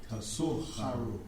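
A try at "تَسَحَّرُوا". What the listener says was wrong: MashaAllah, very good.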